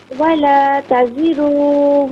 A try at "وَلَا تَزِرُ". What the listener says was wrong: نہیں بیٹا، ولا تزر میں را کو کھینچیے مت، ولا تزر وازرۃ،